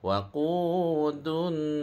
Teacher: ra ditebalkan last sekali walaupun ra tu baris kasrah sebab sebelum dia ada alif dia kena tebal.